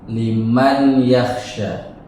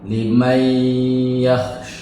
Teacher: bunyi nun sukun atau tanwin tersebut masuk ke dalam huruf ya. Dibaca dengan bunyi sengau, menjadi limai. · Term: idgham bighunah